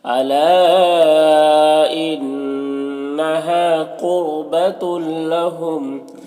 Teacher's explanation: تنوین کو لام سے ملا کر بغیر غنہ کے پڑھیں گے، اس کو ادغام تام کہتے ہیں · الا میں جو مد ہے مد منفصل ہے، اسے 3 سے 4 الف کے برابر کھینچ کر پڑھتے ہیں، اور 1 الف کے برابر بھی کھینچ کر پڑھ سکتے ہیں۔